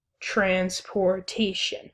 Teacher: we have the first and third syllables stressed